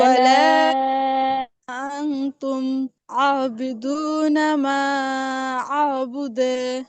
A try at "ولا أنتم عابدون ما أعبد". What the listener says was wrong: বুদে এরকম টান হবে না, জাস্ট কলকলা হবে। বুদে।